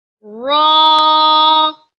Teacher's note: comes from tip of the tongue touches the roof of the mouth